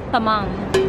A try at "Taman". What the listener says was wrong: Bukan tamang. Taman. Bukan MN. Bukan eng, tapi N.